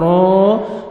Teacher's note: را کو آپ نے موٹا بھی کرنا ہے اور 1 سیکنڈ کھینچنا ہے